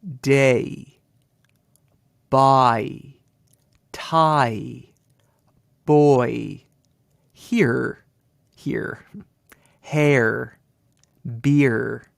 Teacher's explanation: sound this is really interesting you get the two vowels together the two vowels form a syllable yet you can hear both vowels teaming up in the single sound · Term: sliding sound